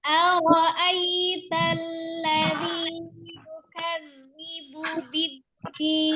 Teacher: Ara'ayya ya betul jelas bunyi i ya dengan tidak memanjangkan karena ini madin di tengah posisinya dia pendek ya, tidak panjang. Kemudian lam tasdidnya tawasutkan atau baiknya ya, lunak ya, tidak ditahan tapi juga jangan terlalu dilepas biar tengah-tengah ya. Yukadzi ada huruf zal bertasdid.